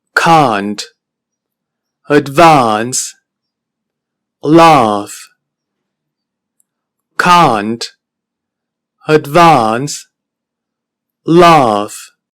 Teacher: La diferencia es que esta vocal inglesa se pronuncia con la lengua mucho más retraída. No completamente retraída, pero sí muy próxima al extremo posterior de la boca. · podemos apreciar que la boca es completamente abierta y en inglés es una vocal larga.